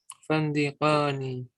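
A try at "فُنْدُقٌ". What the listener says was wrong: Itu bukan kam fandakon ya, fundukon ya. Kam fundukon fi hadha syari'i. Fi hadha syari'i fundukoni.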